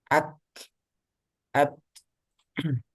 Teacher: kalau kaf sama ta, dia syiddah sama hamas.